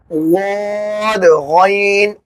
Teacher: वाद में जुबान की करवट ऊपर दाढ़ की जड़ में लगाएंगे और गैन हलक का वो हिस्सा जो मुंह की जानिब है वहां से अदा होगा।